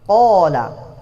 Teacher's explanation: huruf mad yang lahir ketika kita memanjangkan huruf fathah yang berbaris fathah.